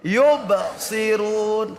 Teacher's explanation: Qalqalah apa? Qalqalah sugro, pantulannya kecil.